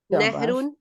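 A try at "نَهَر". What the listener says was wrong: نہر، نہرون نہیں ہے، زبر ہے، نہر، نہر، نہر، نہر یا نہرون.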